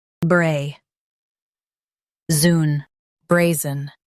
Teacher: Stress bray and soften zun